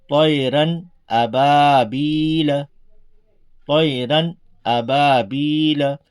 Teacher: نہ اس میں ہم کو طیران کرنا ہے، نہ اور کسی طرح سے اس میں کچھ وقت لگانا ہے، بلکہ نارمل طریقے سے سیدھا سیدھا اس کو پڑھنا ہے، یعنی ظاہر کر کے، تنوین کو ظاہر کر کے پڑھنا ہے، بلا غنہ کے جلد پڑھیں گے۔ اس کو اظہار کہتے ہیں، اس کو ظاہر کرنا کہتے ہیں۔